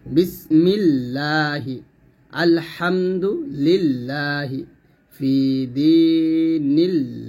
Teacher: আল্লাহ শব্দের বারিক পড়ার নিয়ম হচ্ছে, আল্লাহ শব্দের মধ্যে লামের ডাইনে জের হলে উক্ত লামকে বারিক করে পড়তে হয়। অর্থাৎ আল্লাহ শব্দের লামের ডাইনে জের আসছে, এখন পাতলা হবে।